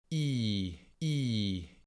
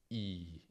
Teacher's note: lingua si trova in avanti, in alto, molto vicina al palato. I. Quando la pronunciamo, le labbra non si arrotondano.